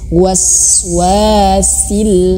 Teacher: sinnya mengeluarkan angin jelas